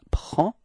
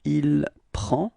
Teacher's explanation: Final D is not pronounced, so it's only the P-R-E-N, prend.